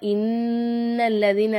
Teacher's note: இந்த நூனுக்கு மேல சத்து பெற்ற காரணத்தினால நம்ம என்ன செய்யணும் இந்த நூனை வந்து நல்லா அழுத்தி நம்ம வந்து உச்சரிக்கணும்